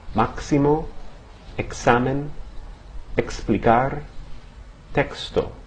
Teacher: Okay, in most Spanish words, the letter X has a pronunciation similar to that of the X in the English word taxi or exit. Something like a K and an S pronounced together. Some examples, maximo, examine, explicar, texto.